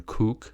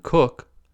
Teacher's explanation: in kook and cook, the first word has a tense vowel, u, and the second has a lax vowel, u. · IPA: /u/ and /ʊ/